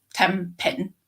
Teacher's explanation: So, as a simple example, when you say 10 pin or 10 pins, the N at the end of 10 is more likely to be M rather than N